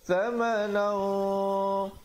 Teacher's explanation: ikhfa di situ menjadi tebal kerana qaf sifatnya isti'la